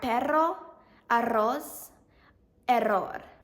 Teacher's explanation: like the Spanish R, but it's longer and rolled, like R. Some examples are perro, arroz, error.